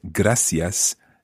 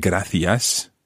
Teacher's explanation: the use of the s sound rather than the th sound